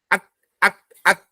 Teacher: Sedikit ada udara, percikan udara. Bukan hembusan udara, tapi percikan udara. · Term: hamas